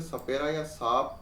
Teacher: जब हम स बोलते हैं ये वाला स से षट्कोण वाला स बोलेंगे तो इसका उच्चारण करते समय मुर्दा और स से सपेरा या सांप बोलते समय हमारे दांतों से घर्षण होता है